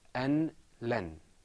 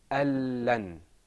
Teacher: The noon, because there's idgham here, we don't pronounce the noon, we go straight into the lam.